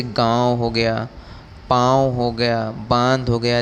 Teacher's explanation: यह संस्कृत में नहीं पाई जाती हैं। ठीक, इनके उच्चारण के समय हवा मुंह और नाक दोनों से निकलती है।